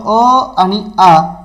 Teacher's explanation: अ आणि आ या दोन्हीचा उच्चार सारखा आहे म्हणजे जवळपास एकच त्यांचं उच्चार स्थान आहे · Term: सजातीय स्वर